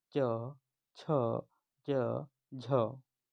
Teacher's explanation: मुख विवर में हवा के रुकने के बाद घर्षण के साथ बाहर निकलने को स्पर्श संघर्षी कहते हैं